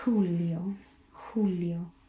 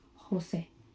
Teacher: In Spanish, it sounds much more like an H. So you breathe into it.